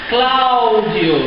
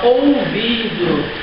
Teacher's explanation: o som forte fica na primeira vogal do ditongo